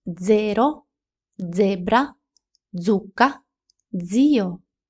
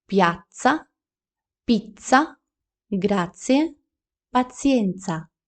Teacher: може вимовлятися як дзвінка ДЗ або як глуха ц